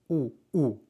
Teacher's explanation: la u se pronuncia con los labios tensos y hacia afuera